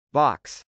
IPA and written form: bˈɑks (box)